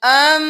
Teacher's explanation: اب یہاں پر دیکھ لیجئے، یہاں پہ بہت سے لوگ امن حد الذی پڑھتے ہیں، لیکن میم پر تشدید ہے تو ہم ام اور پھر من پڑھیں گے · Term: گنہ